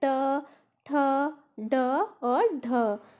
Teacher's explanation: तो मूर्धन्य से ट वर्ग का उच्चारण होगा